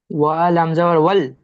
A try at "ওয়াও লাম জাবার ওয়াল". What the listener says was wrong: ওয়াও, শুনেন, ওয়াও লাম জাবার ওয়াল। ওয়া বলে কোনো অক্ষর নেই, ওয়াও বলে অক্ষর আছে।